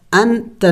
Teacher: हमज़ा नून ज़बर अन, ता ज़बर ता, अंता, ये देखें यहाँ पे नून साकिन है, आगे हरूफ़ी हल्क़ी में से कोई हर्फ नहीं है तो हमने इख्फ़ा करना होगा, यानी नाक में आवाज़ छुपाना होगा, नून को ज़ाहिर करके नहीं पढ़ेंगे बल्कि नून की आवाज़ को छुपाना होगा। अंता, अंता नहीं पढ़ेंगे, अंता इख्फ़ा करेंगे इसलिए कि इसके बाद हरूफ़ी हल्क़ी नहीं है बल्कि ता है।